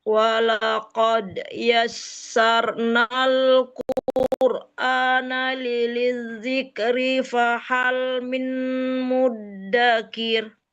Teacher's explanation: Ditahan lidzik karena dalnya tasdid.